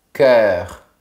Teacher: C'est vraiment vertical comme son. C'est comme si tu prononçais care, mais de manière plus fermée, plus verticale.